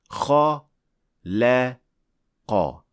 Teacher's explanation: In this verb, lam is a light letter in between two heavy letters. And to free that light letter from the other two heavy letters, we'll follow 5 steps.